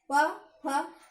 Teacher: तो दोनों होठ आपस में जुड़ रहे हैं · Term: पवर्ग